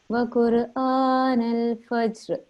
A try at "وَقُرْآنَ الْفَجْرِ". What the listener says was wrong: It's a little bit tricky, this bit, because I know this, you're trying to do a kalkula here, but it is followed by another letter that also has a sukoon in the end. So it's a little bit tricky, but you did it right.